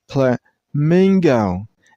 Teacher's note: And while you pronounce this word, use a stress on the middle syllable. I mean on the second syllable.